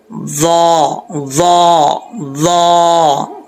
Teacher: تو یہ جو ضا ہے اس کو پڑھتے وقت آپ نے سیٹی نہیں نکالنی. اس چیز کا آپ نے خاص خیال رکھنا ہے کیونکہ اس کا مخرج ایسا ہے کہ سیٹی کے بغیر یہ پڑھا جاتا ہے. · اس چیز کا آپ نے خاص خیال رکھنا ہے کیونکہ اس کا مخرج ایسا ہے کہ سیٹی کے بغیر یہ پڑھا جاتا ہے. زبان کی نوک اوپر والے دانتوں کے اندرونی حصے سے لگے تو یہ ضا پڑھا جاتا ہے